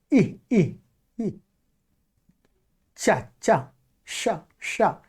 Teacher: जिह्वा है वो तालु तरफ थोड़ा भागता, जिह्वा का आगे का भाग तालु तरफ भागता है।